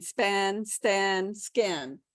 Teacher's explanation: english has the spanish p t and k but in the middle of the word like span